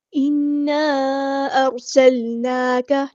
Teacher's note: ارسلناک، حمزہ کی آواز واضح ادا کریں گے، سین کی سیٹی ہم واضح ادا کریں گے، لام ساکن کو ہم ہلائیں گے نہیں.